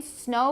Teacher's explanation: Snow, because of the O, your lips are rounded. And air passes through the nostrils. · so the tip of the tongue touches the alveolar ridge the lips are apart the lips are rounded snow rounding is · air air passes through the nostrils the vocal folds are vibrating we have to mention that the air goes through the nostrils and not out of the mouth